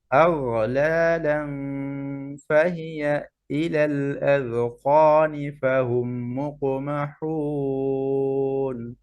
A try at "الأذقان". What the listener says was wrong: এই যে এই সুকুন পড়ার সময় খেয়াল কলকলা হয়ে যায়, আযকানি, আযকানি, ঠিক আছে।